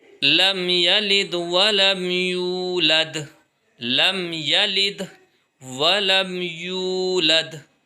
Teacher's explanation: ولم یولد میں یو کھینچے گا کیونکہ اس میں واو مدہ ہے